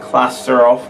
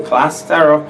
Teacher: I've just done catenation. I've linked my consonants to my vowels.